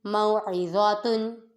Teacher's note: تن، موعظاتن، میم پہ واو لین، عین متحرک، ضا متحرک، اور ضا میں سیٹی کی آواز نہیں آئے گی اور حروف مستعلیہ میں ہونے کی وجہ سے اسے پر پڑھیں گے ، اور تا پہ منون، میم واو زبر مو، ضاد واو